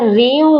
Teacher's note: بہت سے لوگ یہاں پر ملاتے ہوئے غلطی کرتے ہیں، رو نا رو، تو را کے اوپر 2 زبر دے دیتے ہیں، را کے نیچے ہے 2 زیر، اسی لیے ہم را کو واو کے ساتھ ملائیں گے تو یہ بنے گا ریوں، اور آواز ہماری جا رہی ہے ناک میں، کیونکہ یہاں پر ہم ملا بھی رہے ہیں اور غنہ بھی کر رہے ہیں. اس قاعدے کو کہتے ہیں ادغام مع الغنہ، یعنی کہ ہم نے ملا کر غنہ کر کے پڑھنا ہے.